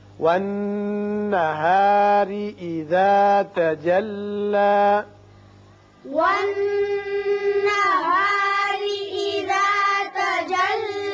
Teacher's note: نون مشدد ہے، غنہ ہوگا، را کے نیچے زیر ہے، اس کو باریک پڑھیں گے۔